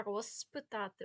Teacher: а розпитати буде через з хоча воно оглушується і ми можемо не розчути чітко цю літеру префікси чітко роз